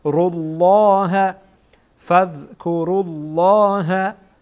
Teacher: لام جلاله در اینجا پر خوانده میشه